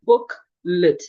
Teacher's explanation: The schwa is articulated So if I want to pronounce this word, I would say booklet. The E here, the E in L-E-T is reduced into a schwa.